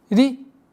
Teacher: четкое произношение огласовки кесра, и звук ра в данном случае является мягким звуком. Применяем правило калькаля.